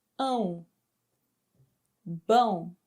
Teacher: Bone bone the teal mark this accent makes the vowel sound have a nasal sound. So um the sound comes out of your mouth and nose for nasal and for oral it just comes out of your mouth.